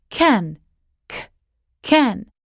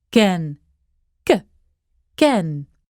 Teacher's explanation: the difference between the English and Dutch is all about that puff of air.